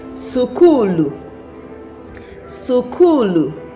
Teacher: But in EO if I am to say that word school with my EU accent, I am going to say sukulu sukulu. Again my accent is going to introduce vowels to separate the consonants for me to be able to say that word